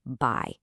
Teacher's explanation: It's not one sound. It's really an a sound that glides smoothly into an e sound. · Your tongue actually glides from one position to another all within the same syllable. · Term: dip thong